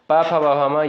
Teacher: प, फ, ब, भ, म ये आपका दोस्तों ओष्ठ से होगा।